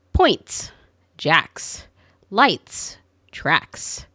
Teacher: Final S after an unvoiced sound is S.